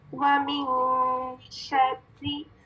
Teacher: شین جب ہم ادا کر رہے ہیں تو اس میں شاورنگ ساؤنڈ. ٹھیک ہے, را مشدد کسرہ کے ساتھ, یعنی 2 را اور دونوں را باریک پڑی جائیں گی.